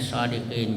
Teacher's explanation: Jadi huruf terakhirnya yang berbaris fathah itu dibaca sukun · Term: mad arid lisukun